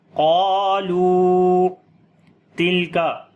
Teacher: تا کو کاف دونوں کو باریک پڑھیں گے